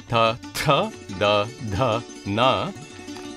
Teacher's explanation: the dentals behind the front teeth